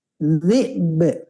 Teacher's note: hamzah dulu baru qalqalah sukun ya. Sukun ba ya.